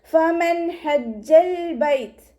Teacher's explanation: നൂൻ സാക്കിനയ്ക്ക് ശേഷം ഇവഹാറിൻ്റെ ലെറ്ററായിട്ടുള്ള ഹ വന്നിട്ടുണ്ട്. നൂൻ സാക്കിനയെ വ്യക്തമാക്കി മണിക്കാതെ ഉച്ചരിക്കുക. നൂനിൻ്റെ സൗണ്ടിനെ വ്യക്തമായിട്ട് കേൾപ്പിക്കുക.